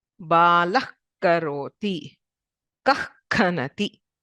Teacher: it is as if the visarga is cut short at the base of the tongue. Jihva is tongue and mula is base. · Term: jihva muliya